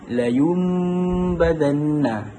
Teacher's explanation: Jadi contohnya la yumbadanna. Bibir ni dia kena terus rapat je. Jadi kan huruf nun tu digantikan dengan huruf mim. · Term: iklab